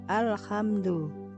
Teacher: lam mati bertemu dengan kha dibaca jelas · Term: alif lam komariah